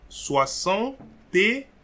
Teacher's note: there will be a liaison between the T and the ET. So it will create T, E accent aigu.